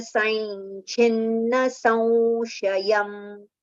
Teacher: The anuswar sound will be anunasik va because the following letter is sh.